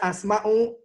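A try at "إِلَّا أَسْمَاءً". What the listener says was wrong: Ini asma'an ya, ini salah harakat ya. Illa asma'an samaitumuha antum wa abaukum.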